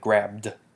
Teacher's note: Okay, because the b is no longer voiceless, and it is not an alveolar stop, it's a bilabial stop, so therefore you're just going to have grabbed.